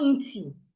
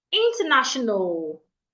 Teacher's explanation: I hear people say international. It's not inti. It's inter. Inter. There's a schwa there.